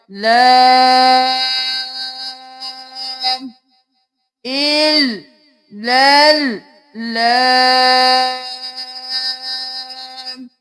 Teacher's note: کھڑی زبر 1 الف کے برابر کھینچی جائے گی اور مد 5 الف کے برابر کھینچی جائے گی، تو 6 الف کے برابر ہم اس لام کو کھینچیں گے۔